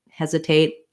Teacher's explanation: I might do a stopped T that ends up not really releasing the air there.